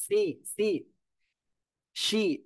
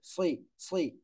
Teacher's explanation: দেখেন সজের সুই, অনেকে বলে সি সি শি, এরকম বললে হবে না, সুই দুই ঠোঁট হালকা গোল হবে